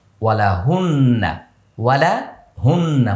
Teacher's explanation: নুনের গুন্না মুখ ফাঁকা, নুনের গুন্না মুখ ফাঁকা, যেখানে নুন সেখানে ফাঁকা।